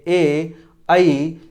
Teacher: और ये ए, ऐ, ये कंठ तालव्य स्वर हैं, इसलिए इन्हें कंठ तालव्य स्वर कहते हैं। इनका उच्चारण स्थान कंठ और तालु दोनों से होता है।